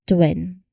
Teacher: You'll initiate the T sound here and then immediately round your lips for the W creating that quick seamless transition. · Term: tw cluster